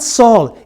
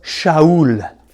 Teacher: in the Greek they don't have the sh sound